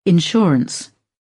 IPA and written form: ɪnˈʃɔː.r (Insurance)